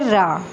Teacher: जिन व्यंजन उच्चारण का वर्णों का उच्चारण करते समय जिभ्या में दो-तीन बार कंपन होता है उन्हें प्रकंपित व्यंजन कहते हैं।